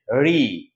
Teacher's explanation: ঋ হচ্ছে মূর্ধা থেকে উচ্চারিত হবে।